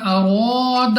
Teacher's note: را پر ہے زبر، تو را کو ایک تو پر پڑھنا ہے موٹا، اور اس کے ساتھ ساتھ کھینچ کر بھی پڑھنا ہے